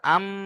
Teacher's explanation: মিম এর উপরে তাসদিদ অজিব গুন্না মানে এখানে গুণনা করতেই হবে